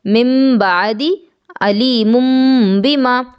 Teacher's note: اقلاب میں حقیقتاً اخفا ہوتا ہے، اس لیے اقلاب کے لیے بھی غنہ لازم ہے۔ جب اقلاب کیا جائے گا اس حالت میں بھی اخفا یعنی آواز کو ناک میں چھپایا جائے گا